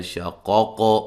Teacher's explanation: قاف کو ہلا کے پڑھیں گے، قلقلہ ہے موٹا ادا کریں گے